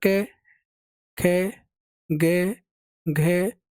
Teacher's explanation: कंठ में होता है आपका क, ख, ग, घ